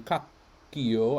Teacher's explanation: I stop the K and then make another one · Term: double consonant